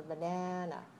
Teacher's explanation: But if it's a word like banana, the first syllable is weak, and a weak syllable should be low and short. And then you rise and lengthen the second syllable, and then you go down for banana. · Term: rise falling